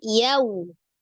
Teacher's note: Fathahkan dulu ya dibuka, kemudian dimonyongkan untuk waw sukunnya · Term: huruf lin